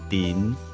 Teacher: 舌头要轻轻的往上稍微顶一下，顶到上排牙齿的后面